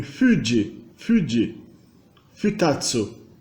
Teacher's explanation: O H seguido de U, né, o U japonês, esse H seguido de U, ele vira automaticamente um F, como em Fuji, Fuji, Futatsu.